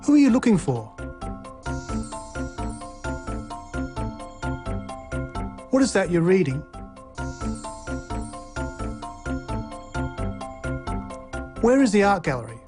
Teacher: Questions with who, what, when, why, and how also use this low or falling tone.